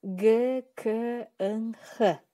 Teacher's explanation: Тилдин арткы бөлүгүндө тоскоолдукка учурап жасалган үнсүз тыбыштар. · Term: артчылдар